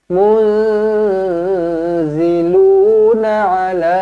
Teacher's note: nun kosong bertemu dengan zai, ikhfa hakiki, dengungkan dua harakat. Munziluna ala, panjang 4 atau 5 harakat.